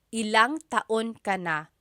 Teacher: When there's ilan ang, it's usually put together and it's ilang.